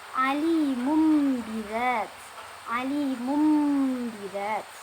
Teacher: Mim matinya digantikan dengan mim sukun dan dibaca dengan mendengung.